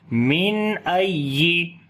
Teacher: ای، نون ساکن کے بعد حمزہ آگے اظہار حلقی کریں گے، نون کی آواز کو ظاہر کر کے پڑھیں گے اور نون کے اوپر صفت توسط بھی ہوگی، آواز کو ہلکا سا کنٹینیو کریں گے